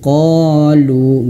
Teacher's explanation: Nah, jadi kalau mad thbi'i itu dua harakat ya. Qo lu ya mad thobi itu yaitu dia panjang dua harakat. Fathah di depannya ada alif.